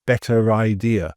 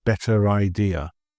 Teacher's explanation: it's almost as if the R is pushed over to the start of the following word